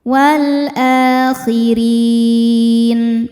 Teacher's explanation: Nah, ini baru mad badal ya. Sebab ada hamzah yang dipanjangkan. Cara bacanya panjang dua harakat.